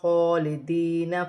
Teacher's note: یا ساکن سے پہلے زیر ہے تو یا مدہ بنے گی، تو دال کو یا کے ساتھ ملا کر پڑھا جائے گا